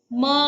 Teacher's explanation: ಮೂಗಿನ ಸಹಾಯದಿಂದ ಉಚ್ಚರಿಸಲ್ಪಡುವಂತಹ ಎಲ್ಲಾ ಅಕ್ಷರಗಳನ್ನು ಕೂಡ ನಾವು ಅನುನಾಸಿಕ ಅಂತ ಹೇಳಿ ಕರೀತೀವಿ